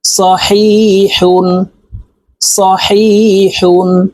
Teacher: এটি বড় হা হালুকের মধ্যখান থেকে উচ্চারণ হবে